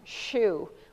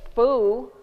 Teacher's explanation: SH is unvoiced, and so is F, and so is TH.